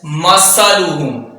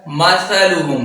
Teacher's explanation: مثلہم، تھا ہے، تھا بغیر سیٹی کے ادا ہوگا،